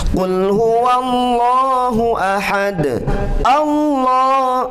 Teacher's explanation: tebal ya, tafkhim. Lafaz Allah dibaca tafkhim.